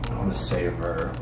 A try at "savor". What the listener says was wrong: Not saber tooth.